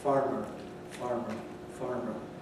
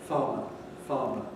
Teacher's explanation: on to the regions of england in the west of england people still may retain the r which is shown in the spelling when it occurs before a consonant or finally in a word so the word farmer illustrates this very nicely because we've got